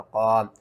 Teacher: الف سے پہلے زبر ہے، حروف مدہ ایک الف کے برابر کھینچ کر پڑھیں گے